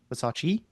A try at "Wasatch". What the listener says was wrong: No, it's CH at the end.